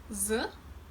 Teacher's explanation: when I pronounce my Russian z, z, my lips remain more neutral